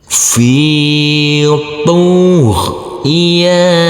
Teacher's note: Kita uraikan dulu. Huruf fa yang berkasroh ini bertemu dengan huruf ya sukun, maka kita baca panjang dengan panjang 2 harokat